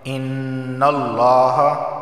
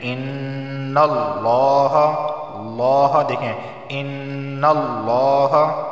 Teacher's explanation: لفظ اللہ سے پہلے زبر آیا ہے تو لفظ اللہ کو موٹا پڑھا جائے گا، اور نون پر تشدید ہے تو اس وجہ سے یہاں پر غنہ ہوگا۔